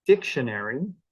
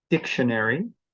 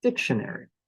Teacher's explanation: the first syllable is the one that gets the stress and that syllable is louder dictionary it's actually a little bit longer than an unstressed syllable